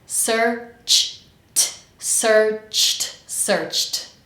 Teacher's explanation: at the end of searched, we have ch, the exploding sound, ch, and then t.